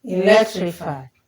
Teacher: So the one we stress here is leg.